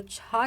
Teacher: जो छा है ये महाप्राण ध्वनि है। अघोष ध्वनि है, तो ये भी दोस्तों अघोष ध्वनि के अंतर्गत भी आता है।